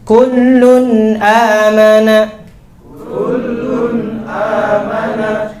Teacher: Jadi cara membacanya itu dijalankan suara huruf nunnya, tidak dihentak kullun, ya, tidak pula memantul kullun